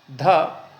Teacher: ध सघोष महाप्राण दंत है